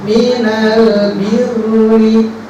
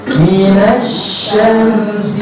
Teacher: Jadi kalau alif lam idhar qamari itu lamnya itu jelas ya, disukunkan. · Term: alif lam qamari